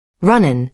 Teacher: The G drops because it's softer.